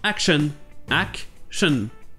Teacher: Et bien pour le O, ça sera toujours le cas dans les mots qui finissent en ION. Cette terminaison sera toujours non accentuée et il y aura le son E. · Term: schwa